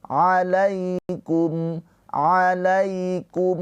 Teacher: Wa antum tutla alaikum. Ya sukun sebelumnya harokatnya fathah, ini harfulin. Cara bacanya dilembutkan ke huruf ya.